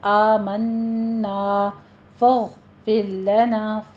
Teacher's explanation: غین کو ادنا حلق سے ادا کریں گے اور اس کو اپنے مفخم پڑھنا ہے۔